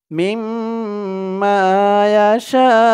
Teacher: কারণে 4 আলিফ টান হয়ে গেছে এক আলিফ টানটা মিম্মা ইয়াশা শা বলে 4 আলিফ টান দিয়ে এই হামজাকে ধরবে হামজার উপরে পেশ হরকত এটা সাকিন হয়ে যাবে